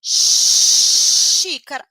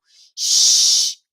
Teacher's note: o ponto articulatório é língua palatal a língua tá lá encostando no céu da boca mas eu faço o biquinho sh prolongo o ventinho e não vibra o pescoço x parecido